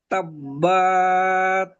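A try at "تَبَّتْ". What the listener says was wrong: বাত বাত টান দিলে হবে না।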